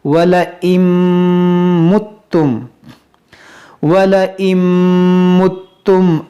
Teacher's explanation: اب یہاں پر دیکھیں یہ نون ساکن کے بعد میم ہے یہاں پر بھی ادغام ہوگا. یہ نون یہاں پر سائلنٹ ہوگا یعنی نون یہ میم میں داخل ہو جائے گا. یہ حمزہ نون میم زیر ام پڑھیں گے.